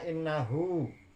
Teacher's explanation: di situ ada nun sukun, mendengung cara membacanya, maka itu dinamakan hunnah